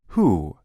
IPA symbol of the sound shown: u